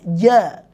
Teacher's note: makhrajnya huruf Jim itu Tengah lidah